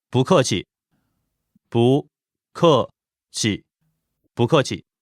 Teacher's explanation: The tones for this are second tone, 不, fourth tone, 客, and no tone, 气. Like I said before, 不 normally is fourth tone, but when followed by another fourth tone, it becomes second tone.